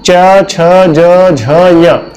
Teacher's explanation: च वर्ग जो है वो आपका बोला जाता है तालु से